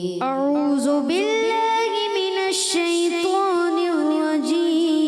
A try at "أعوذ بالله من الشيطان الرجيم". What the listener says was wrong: مل کے پڑھنا ہے. اور اعوذ میں بار بار بتاتا ہوں ذال ہے، یہ کیا ہے؟ ذال.